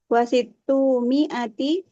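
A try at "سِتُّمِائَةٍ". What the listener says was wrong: Bahasa Arab sudah betul, harokatnya tinggal disempurnakan lagi. Untuk yang ratusan ditanwinkan. Situ mi'atin.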